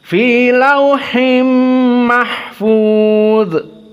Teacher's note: dha dibaca dalam keadaan bukan qalqalah dan dalam keadaan dhadhidu ad.